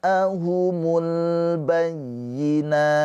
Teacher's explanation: Mad wajib muttasil dibaca panjang boleh empat atau lima harakat.